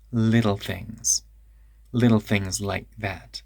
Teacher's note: the T in little always turns into a tap